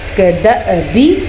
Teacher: کوئی سی بھی حرکت ہو، زبر زیر پیش، یہاں پہ ساکن ہے تو بھی یہ حمزہ بن گیا۔ تو جب حمزہ کے اوپر ساکن ہوگا تو چھوٹا سا جھٹکا پیدا ہوگا